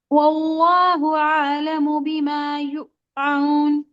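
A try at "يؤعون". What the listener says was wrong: यूऊन, यहाँ पे झटका नहीं लगाएगा, यूऊन।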